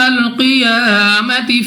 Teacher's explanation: قاف مستعلی میں سے یا موٹا پڑھیں گے، منہ اور آواز کو کھول کر، یا پر کھڑا زبر ہے تو اس کو 2 سیکنڈ تک لمبا کرنا ہوگا۔